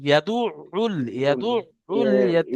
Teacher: দেখেন আইনের উপরে তাসদিদ আছে, আইনকে দুবার পড়তে হবে, একবার ডান দিকের অক্ষরের সাথে অর্থাৎ দালের সাথে, দাল আইন পেশ দু, আইন লাম দুল পেশ উল, ইয়াদু উল, উল ইয়াদু উল ইয়াতীম।